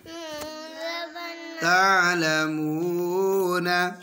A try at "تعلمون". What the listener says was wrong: اب نون کی زبر نہیں پڑھیں گے تعلمون ثم كلا سوف تعلمون